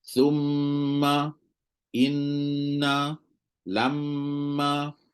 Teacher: bunyi dengung ni sebenarnya dia lebih panjang daripada asli